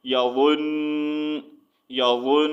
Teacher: تو ہم نے 1 سیکنڈ کے لیے ناک سے آواز نکالنی ہے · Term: غنہ